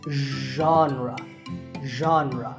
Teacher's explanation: It's like sh, but you have to put your voice into it.